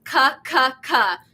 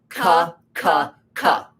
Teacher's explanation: So that tests the back of your tongue. So what your tongue has to do is raise up and make contact with your soft palate